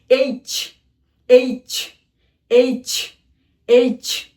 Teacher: এটি ছ উচ্চারণ হবে না, চ উচ্চারণ হবে। চ সুন্দর করে উচ্চারণ করতে হবে।